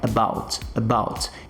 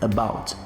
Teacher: Eu tenho esse schwa sound aqui na minha primeira sílaba, about. Percebe que eu quase não pronuncio esse A.